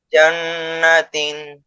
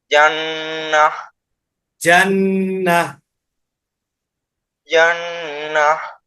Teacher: ওয়াকফ অবস্থায় গোলতা হা হয়ে যায়।